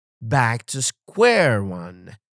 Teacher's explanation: Stress on back and square.